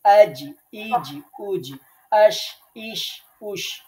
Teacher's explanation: জিহ্বার মধ্যখান তার বরাবর উপরের তালুর সাথে লাগাইয়া জিম শিন ইয়া শক্ত করে। তাহলে জিহ্বার মিডল পয়েন্ট তার বরাবর উপরের তালুর সাথে লাগিয়ে 3টা অক্ষর উচ্চারিত হবে এবং 3টা হরফই শক্ত করে উচ্চারণ করতে হবে